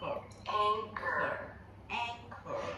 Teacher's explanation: my lips are still flared, but they don't come into the tight circle that they do for a beginning R. The lip position is more relaxed.